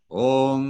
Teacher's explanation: the dot over an M indicates that we close our lips and at the same time close the back of our tongue to the back of the roof of our mouth, making a kind of rounded shape with our mouth.